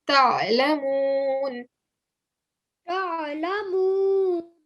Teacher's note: when you're saying the ayn, try not to say ta and give like a very hard jerking sound. It's a very soft one. So all you're saying is ta.